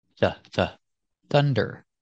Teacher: the U makes a short sound uhuh like cup and up